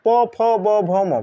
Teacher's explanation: ओठ को ओठ स्पर्श करके उच्चारित होती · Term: ओष्ठ्य वर्ण